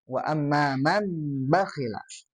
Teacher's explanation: Dalam istilah qolbun nuni sakinati a tanwini mimman bigunnatin maal ikhfa. Mengubah nun sakinah atau tanwin menjadi mim ketika bertemu dengan ba. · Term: iqlab